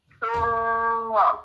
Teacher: ثم میم مشدد ہے غنہ کیا